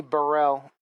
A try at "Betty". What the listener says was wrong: And just to help you out here, it's pronounced Betty. Drop the L.